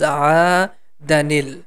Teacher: we have to express the hidden noon, and we have to give it a kasra, so then it becomes aadanil.